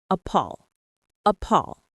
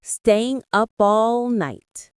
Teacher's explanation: Notice how we link the words up and all. The P from up and the A from all connect. It sounds like a appall.